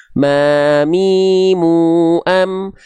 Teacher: Jadi kita kenal dulu nama aslinya namanya mim. Mim ini dilafalkan plek-ketiplek seperti kita melafalkan huruf M pada abjad alfabet dengan cara menyentuhkan bibir atas dan bibir bawah kita. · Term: huruf mim